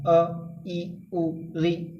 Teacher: इस टाइप के जो स्वर हैं इनमें हमारा मुख द्वार कम खुलता है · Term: ह्रस्व स्वर